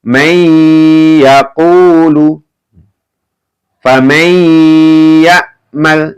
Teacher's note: Jadi masuk dengan mendengung ya, ditahan ya. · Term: idgham bi gunnah